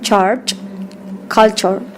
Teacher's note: The alveolar affricate sounds. Ch. This sound is voiceless.